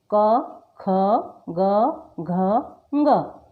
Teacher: क से ङ तक के वर्ण क वर्ग में आते हैं। तो इन्हें कंठव्य भी कहा जाता है